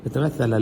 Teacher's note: ثا پڑھتے ہوئے زبان باہر نکلے